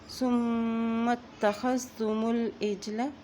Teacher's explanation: میم کے اوپر شد ہونے کی صورت میں یہاں پہ غنہ کر دیں گے اور میم کو تا کے ساتھ ملائیں گے